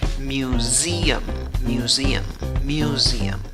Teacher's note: La sílaba que lleva la fuerza de voz es la segunda, contando de izquierda a derecha. En la primera sílaba tienes el sonido de la Y con la U. · Mew, la primera sílaba. La segunda sílaba tiene, aunque la escritura va con S, la pronunciación va con Z. Y la vocal que tienes en la segunda sílaba es la E con sombrero, que es la I que se ríe, la I larga. · Y la vocal que tienes en la segunda sílaba es la E con sombrero, que es la I que se ríe, la I larga. En la tercera sílaba tienes una U en la escritura, pero en la pronunciación no hay una U, hay una schwa, la que no es ni A, ni E, ni O.